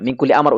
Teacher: suara samarnya itu sangat rendah atau sudah seperti bunyi ang